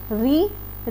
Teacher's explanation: ऋ ऋ हमारा मुर्धा से बोला जाता है इसलिए इसे मूर्धन्य कहा जाता है